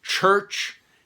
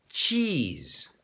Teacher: even in English, church is a heavier ch sound than cheese